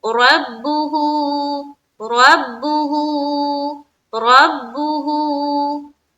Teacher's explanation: रब्बुहु में क्या ख्याल रखना है कि रा हमारी पुर होनी चाहिए बा से मिलते हुए, फिर बा को पेश की हरकत के साथ पढ़ेंगे, मारूफ का ख्याल रखेंगे।